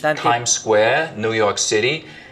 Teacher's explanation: this kind of New York City accent tongue tip on the teeth